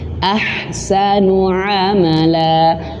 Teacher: Maka amala panjang 2 harokat, dan ada yang berpendapat lebih daripada 2 harokat ya. Nah, dan teman-teman harus perhatikan huruf ainnya tidak boleh masuk hidung